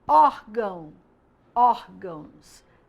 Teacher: é a penúltima sílaba que é a parte mais forte eu boto mais intensidade nessa parte da palavra